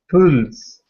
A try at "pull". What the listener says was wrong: Try to get the L down into your throat. Pull. Yeah, pull. There's no S on there, it's just pull.